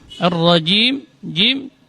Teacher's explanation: Ini termasuk huruf syiddah. Dia keluar dari tengah-tengah lidah. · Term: huruf jim